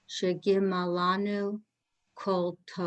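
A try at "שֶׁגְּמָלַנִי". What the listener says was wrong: Not Lanu. Shegemalani.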